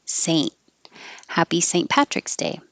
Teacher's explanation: for Saint, you don't have to say the T